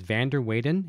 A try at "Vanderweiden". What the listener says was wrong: I think it's Vanderweiden. I think the W would be the V. I could be wrong.